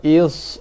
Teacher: Cuma bezanya desiran pada sod tu lebih tebal lah. Lebih tebal, lebih penuh, lebih gemuk berbanding dengan desiran pada sin dan zai.